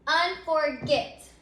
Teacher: So if you say that word, you can hear that unforget, that word ends with a accented syllable. So our last syllable is what's accented in the word